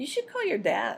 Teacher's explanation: The speaker said You should call your DAD with normal stress on the final noun